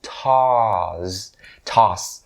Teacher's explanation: the word toss it has the long o sound so toss toss okay and it ends with an s sound so it's really important that you know that it ends with